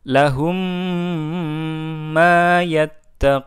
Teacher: Berikutnya adalah huruf mim sukun, ya. Ketika huruf mim sukun bertemu dengan mim, maka kita baca gunnah dengung